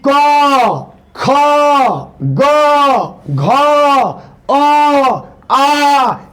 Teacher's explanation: क ख ग घ अ आ इसका उच्चारण कंठ से होता है